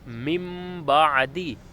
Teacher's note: اقلاب میں یہ ہوتا ہے کہ اگر نون ساکن اور تنوین، دو زبر دو زیر دو پیش کے بعد اگر با آ جائے، نون ساکن اور تنوین کے بعد اگر با آ جائے تو نون ساکن اور تنوین کی آواز کو میم میں تبدیل کر دیں گے